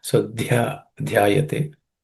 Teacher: Let's look at some pronunciation related aspects. Dhyayato, the dha is in this compound letter dhya, the dha is aspirated